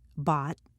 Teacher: T and D are held not pronounced with a sharp bursts of air when they're at the bottom of the staircase at the end of a word